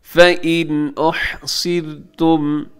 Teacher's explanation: सौद मोटा है लेकिन उसके बाद जो रा है, रा को आप बारीक रखिएगा